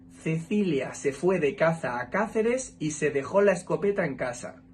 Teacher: Yo la pronuncio distinguiendo el fonema Z del fonema S. No suena igual cuando digo caza que cuando digo casa. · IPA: /s/ y /θ/